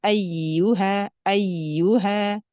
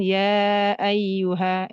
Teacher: Ketika menemukan ya bertasdid itu agak ditekan sedikit ya tapi tanpa menghilangkan sifat roh pada ya